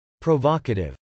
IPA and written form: proʊvˈɑkətɪv (provocative)